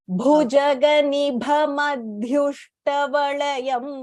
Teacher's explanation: The bhas there are Mahapranah, so you have to stress.